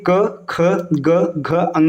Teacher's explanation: कंठ व्यंजन का एक नाम और होता है कोमल तालव्य